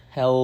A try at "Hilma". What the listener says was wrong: With an I, not Helm.